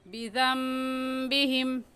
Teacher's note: नून साकिन के बाद बा आ जाए तो वो दोनों मीम बन जाते हैं और उन पर गुन्ना भी होता है।